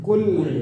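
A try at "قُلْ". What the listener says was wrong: Nah, jangan kaf ya, jangan kul, nggak boleh ada anginnya ya, jangan kul penggaris.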